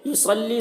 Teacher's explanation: صاد کو پر پڑھیں گے، صاد حروف مستعلیہ میں سے ہے